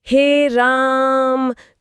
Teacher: जब हम किसी को दूर से आवाज लगाते हैं जैसे हे राम तो वहां जो खिंचाव है वही प्लुत स्वर है।